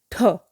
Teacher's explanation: आप जब ठ बोलेंगे तो बहुत ज़्यादा आपके मुंह से हवा बाहर आएगी